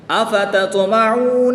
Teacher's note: طا ساکن ہے، حرف مستعلیہ میں سے ہے، اس کو پر بھی پڑھیں گے، اس کو پھر قلقلہ بھی کر کے پڑھیں گے۔